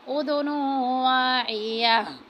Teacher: تنوین کے بعد واو آ رہا ہے تو یہاں پہ بھی ادغام کا قاعدہ لگے گا، ادغام کی صورت میں غنہ کریں گے